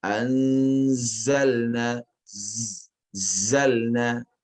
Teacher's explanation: Sofir di sini tidak boleh kalah dengan nun yang ada di sebelumnya. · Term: sifat sofir